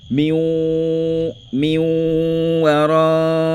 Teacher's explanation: le nun là rentre dans le wa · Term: idgham naqis